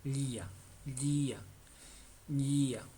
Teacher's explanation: no se hace con la punta de la lengua, sino se hace con la parte de atrás de la lengua.